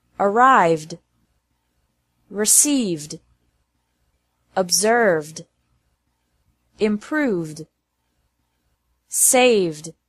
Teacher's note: it's also pronounced like D after verbs ending with a V sound